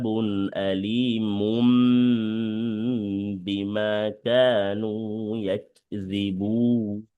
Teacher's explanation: তাহলে তানভিনের পরে যদি বা আসে তাহলে ইকলাবের হরফ আসলে তানভিনটাকে পরিবর্তন করতে হবে মিম দ্বারা। এই কারণে এখানে কি হবে, বুনে বুন আছে কিন্তু এখানে হবে বুম, সরি, মুম।